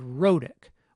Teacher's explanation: the medial consonant sound is a tap. And you‘ll recall that we described the exact situation in which we would expect a tap to appear: when it is an alveolar stop that occurs between two vowels, the second of which is unstressed.